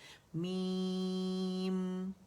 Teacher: میم دونوں ہونٹوں کے خشک سے آپس میں ملا لیا تو اس کا توسط شو ہوا.